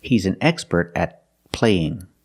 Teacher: Use a stop T and link the sounds.